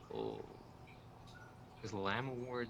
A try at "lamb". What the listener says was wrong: Yeah, but you don't say the B. Lamb does rhyme with ham. You don't pronounce the B because it's a silent B. I don't know if it's silent in all English or not.